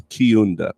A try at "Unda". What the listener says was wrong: The K is silent. It's actually Unda.